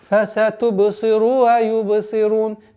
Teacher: Обратите внимание, чтобы буква вау не была долготой продолжения даммы.